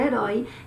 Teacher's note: é uma oxítona terminada em ditongo aberto, oi. · É uma palavra oxítona, cuja última sílaba é a mais forte. E além de ser uma palavra oxítona, ela termina em ditongo aberto.